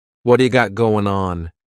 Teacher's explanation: that T at the end of the word what is going to change to a D sound. This is really typical of American English where a T that's surrounded by vowel sounds is going to change to a D. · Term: flapped T